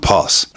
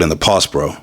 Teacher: the dropping of the consonant at the end of a word.